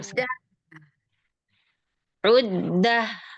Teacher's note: Dia ada rokhawah. Dia ada hamesnya juga. Jadi, jangan buru-buru terhenti aliran suaranya ya.